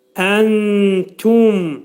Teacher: Nun hərfini tənin məxrəcində gizlədirik. Əntum təfi incə mim izhar, ağız yumulur.